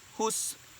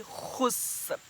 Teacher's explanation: Kha ditekak. Khusr. Khusr di halkum kamu. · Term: huruf kha